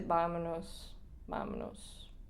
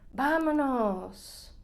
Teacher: No hay curva melódica en verdad. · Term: oración afirmativa